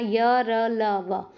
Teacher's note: जीभ जो है किसी भी भाग को नहीं छुए गी · मुख्य किसी भी भाग को पूरी तरह से नहीं छूती और इनके उच्चारण में श्वास का अवरोध बहुत ही कम होता है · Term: अंतस्थ